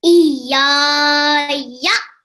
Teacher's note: a bit more prolongation, because remember we've got the alif, which is a letter of prolongation